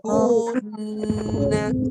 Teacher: Penuhkan hidung, penuhkan hidung. Lepas ku, penuhkan rongga hidung dengan kunna. · Kun itu salah. Dia ada baris depan ku satu harakat. Dengung dua harakat tekan kat hidung. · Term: nun bersabdu